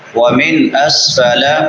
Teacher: من نون ساکن ہے، یہاں پہ اظہار ہوگا کیونکہ بعد میں حروف حلقی میں سے حمزہ آ رہا ہے